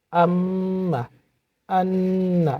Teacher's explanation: 17 number মাখরাজ হচ্ছে নাকের বাঁশি হইতে গুন্না উচ্চারিত হয়